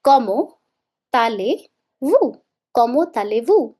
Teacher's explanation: When T overlaps the sound of A, this is called liaison.